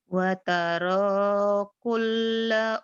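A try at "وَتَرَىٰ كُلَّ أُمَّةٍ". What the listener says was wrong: Lam jangan ditahan. Kalau mim dan nun bertasydid ditahan. Lamnya jangan ditahan. Watara watara kulla lahnya jangan ditahan. Watara umnya ditahan gunnah. Watara kulla ummatin jasiyah.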